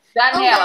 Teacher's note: Na palavra janela, não tem som nasal.